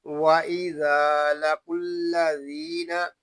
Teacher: یہاں الف مدہ اس لیے ہو رہا ہے کہ الف سے پہلے زبر آ گیا ہے۔ ذال کو نرمی کے ساتھ ادا کریں گے، اس میں سختی نہیں کریں گے، اس میں سیٹی کی آواز نہیں آنی چاہیے۔ قاف یہ حروف مستعلیہ میں سے ہے، اس کو پور یعنی موٹا پڑھیں گے۔ · یہاں پہ ذال کو ایک الف تک کھینچ کر پڑھیں گے کیونکہ یہاں پہ الف مدہ ہو رہا ہے۔ یہاں الف مدہ اس لیے ہو رہا ہے کہ الف سے پہلے زبر آ گیا ہے۔